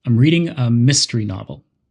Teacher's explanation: If they ask, "What book are you reading?" you could say, "I'm reading a mystery novel." You would stress the word mystery because it's a new part of the conversation.